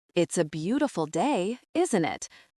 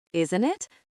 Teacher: Hear the rising tone at the end